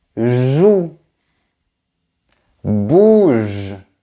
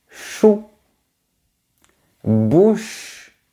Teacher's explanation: Le premier son vibre et le deuxième ne vibre pas.